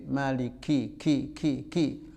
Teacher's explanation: kafnya ada anginnya sedikit